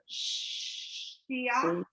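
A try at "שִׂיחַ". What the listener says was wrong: The dot is on the left. it's an S, not a SH.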